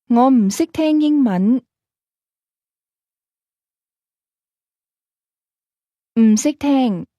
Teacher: the negative 「m」 sound with the falling tone